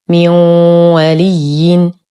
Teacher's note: نون ساكنة وبعدها حرف الواو، الحكم إدغام ناقص مع غنة كاملة مرققة